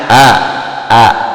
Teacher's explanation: Nah, sifat yang pertama jahar, tampak atau terang artinya ketika mengucapkan huruf hamzah, huruf a itu napas tertahan, tidak mengeluarkan desis